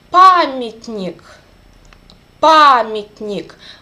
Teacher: A is under the stress, and Ya became E sound.